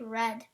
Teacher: There is also the retroflex approximate r in American English, red. It's also usually labialized to r.